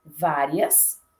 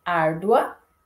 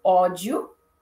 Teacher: Então, primeiro eu tenho o glide e depois a vogal. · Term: ditongos crescentes